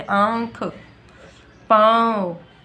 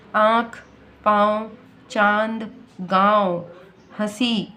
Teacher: मुंह से तो बोल ही रहे हैं, साथ में नाक से भी एक प्रकार की हवा आ रही है, यानी वो उच्चारण हम नाक से भी कर रहे हैं। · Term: अनुनासिक